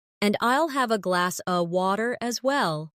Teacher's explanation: In connected speech, glass of sounds like glass a.